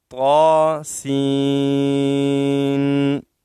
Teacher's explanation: سین کا نون جس میں اخفا ہے وہ یہاں ظاہر کریں گے. اور طا کو زیادہ لمبا نہیں کریں گے، زیادہ کھینچیں گے نہیں، کیونکہ مد اصلی ہے اور ایک الف کی مقدار اس میں مد ہے.